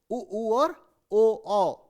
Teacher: अगर जब आप उच्चारण करेंगे तो आपका मुंह जो है वो एक ऐसे गोल, एक अंडाकार शेप ले लेता है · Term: वृत्ताकार स्वर